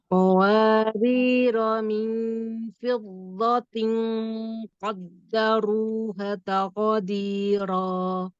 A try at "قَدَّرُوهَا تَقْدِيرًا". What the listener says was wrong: qaddaruha. Jelaskan qaf, jelaskan dal.